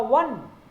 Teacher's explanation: the first sound seems as a vowel, but it sounds w. It is a consonantal sound. Therefore, we use a before one, a 1 rupee note.